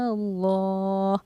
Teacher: लफ्ज़ अल्लाह के लाम से पहले क्योंकि ज़बर आ रहा है, इसलिए हमने लफ्ज़ अल्लाह के लाम को पूरी यानी मोटा यानी मुँह भर के पढ़ा है